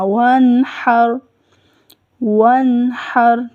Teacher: نون کے اوپر کلکلا نہیں ہوگا، ہر نہیں کہنا، ٹھیک ہے، را کے اوپر بھی کلکلا نہیں کرنا اور نون کے اوپر بھی کلکلا نہیں کرنا · جب وانحر ادا کریں گے تو واو کے لیے ہونٹ گول ہوں گے اور نون کے اوپر کلکلا نہیں ہوگا، ہر نہیں کہنا، ٹھیک